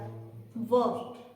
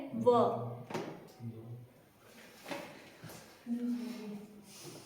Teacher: व ऊपर के दांत और नीचे का होठ है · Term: दंतोष्ठ